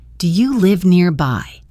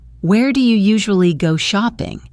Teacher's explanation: Person A, do you live nearby? Rising tone. You answer, yes, just a few minutes away. Person A, where do you usually go shopping? falling tone.